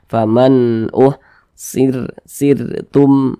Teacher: sebelum huruf ra memiliki tanda baca kasrah, maka huruf ra-nya ini dibaca tipis, dibaca tarkik.